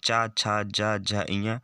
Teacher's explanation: वे व्यंजन जिनके उच्चारण में जीभ की पिछले भाग का तालु से स्पर्श हो उन्हें ताल व्यंजन कहते हैं।